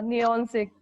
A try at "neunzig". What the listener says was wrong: neunzig. Neunzig. Neunzig. It's not neon, it's neun.